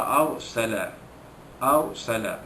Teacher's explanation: ra sukun itu dibaca tebal